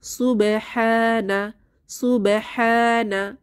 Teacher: হাতে আলিফ সগিরা এক আলিফ টেনে পড়বো